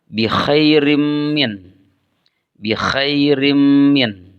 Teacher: Sehingga tanwin pada huruf ra dimasukkan ke dalam mim. Dibaca bi khairim min. · Dan huruf mim sendiri merupakan bagian dari idgham. Sehingga tanwin pada huruf ra dimasukkan ke dalam mim.